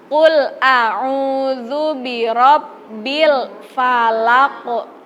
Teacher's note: Nah, itu harus memantul karena kof di situ huruf kolkolah.